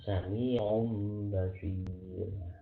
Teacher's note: cara mengucapkan huruf mim samar ialah dengan mengurangi daya lekat kedua bibir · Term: iqlab